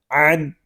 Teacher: عین حلق کے درمیان والے حصے سے ادا ہوگا